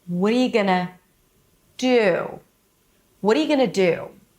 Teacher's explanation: the do is longer than the entire first part of the sentence. It's longer than the entire sentence because five words versus one, one word with one syllable is longer than the first five.